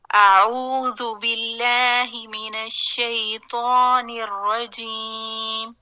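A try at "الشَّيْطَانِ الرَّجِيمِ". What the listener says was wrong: ہلکی سی آواز حرف تا جسے آپ کی پیش کی طرف جا رہی ہے. تا شیطان الرجیم، یعنی زبان کو نہیں موڑیں.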